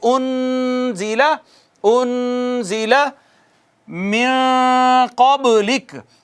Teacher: انزلہ، بتائیے گا یہ جو نون ساکن ہے، نون ساکن کے بعد حروف اظہار میں سے کوئی حرف نہیں آیا، نہ حمزہ نہ ہا نہ عین ہا غین خا، کوئی نہیں آیا، تو اظہار نہیں ہونا، اخفا ہونا ہے۔ اس پر اخفا کہتے ہیں ایک الف کے برابر آواز کو چھپا کے رکھنا